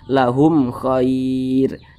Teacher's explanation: Karena dia izhar maka dibaca jelas, tidak berdengung. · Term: izhar syafawi